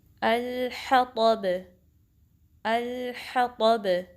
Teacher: با پہ کلکلا ہو رہا ہے اینڈ پہ، کیونکہ با پہ ہم جو ہے سٹاپ کرتے ہیں تو کلکلا ہوتا ہے